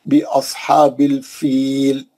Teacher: سواد موٹا پڑھیں گے، مستعلیہ کا ہے